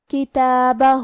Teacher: تا پہ کھڑا زبر ہے، تو یہاں مد الف ہے، ہم اپنی آواز 2 مد کے برابر لمبی کریں گے. آخری میں حرف الہا پہ الٹا پیش ہے، یہاں حکم ہے مد صلہ صغرا، ہم اپنی آواز 2 مد کے برابر لمبی کریں گے.